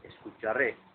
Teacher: your intonation has to go up on the last syllable of the word.